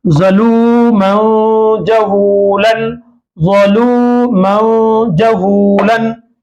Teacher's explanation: जीम क्या है, इख्फा में से है। तो तनवीन के में जो नून है, मन में जो नून साकिन की आवाज आ रही है, ये नून की आवाज को नाक में छुपाना है।